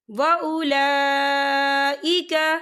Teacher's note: ما جاءهم البینات وَأُولَئِكَ، یہ دیکھیں وَأُولا، لام کے پر کھڑی حرکات ہے، اور اس پر مد بھی ہے، یہ مد جو ہے مد متصل ہے، اور اس کی مقدار جو ہے 4 حرکت کے برابر ہے، تو ہم اسے 4 حرکت کے برابر کھینچ کے پڑھیں گے۔